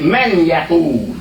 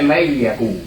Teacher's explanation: So this is what I want you to understand this also, and that is that sometimes letters are ignored in pronunciation. So while this word is man, it's not pronounced when we read it as man Yaqul. It's pronounced may Yaqul.